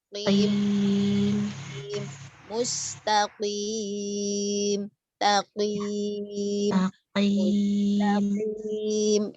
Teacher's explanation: untuk qaf itu kan pangkal lidah paling belakang pada posisi menempel langit-langit bagian lunak. Ya, daging lunak yang paling belakang.